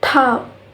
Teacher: So the airflow is completely blocked and then suddenly released. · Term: plosive